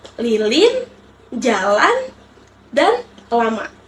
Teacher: Bunyi ini dihasilkan saat lidah menyentuh langit-langit, tetapi udara mengalir di samping lidah. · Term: konsonan sampingan L